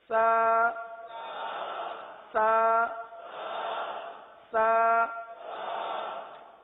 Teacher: زبان کا سرا اور اوپر کے دانتوں کے اندرونی کنارے سے یہ حرف ادا ہوتا ہے